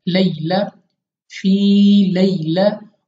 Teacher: या लीन है, तो हमने बगैर खींचे पढ़ना है जल्दी के साथ।